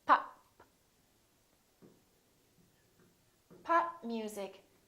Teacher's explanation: this is a stop because I'm stopping the airflow